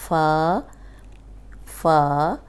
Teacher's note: فا فا جو ہونٹوں کا تر حصہ ہے وہاں پہ دانت لگیں گے